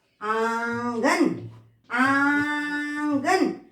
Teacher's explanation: नाक और मुंह दोनों से आवाज आ रही है